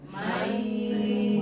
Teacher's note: disertai dengan dengung itu maksudnya masuk getaran pangkal ini ada berasa di hidung